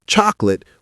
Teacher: Not cholate with three syllables. It's chocolate with two syllables, fast and compressed.